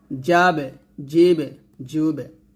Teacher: বা জিম দাল তিনটা আওয়াজ নিচে নামিয়ে কলকলা করব, যেমন জিম বা জবর যাবে, যাব এটা না, যাবে এভাবে।